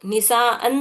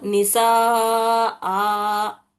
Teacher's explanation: आखिरी हर्फ की आवाज को दो हरकत खींच कर पढ़ना पड़ता जब आखिरी हर्फ के ऊपर दो जबर आ रहे तो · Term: मद्दे असली